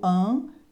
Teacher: Esse AN é um fonema só, tá? É o A com tiozinho, é o fonema nasalizado, é o A nasalizado.